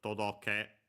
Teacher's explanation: todoke. On its own should be accented on the last syllable.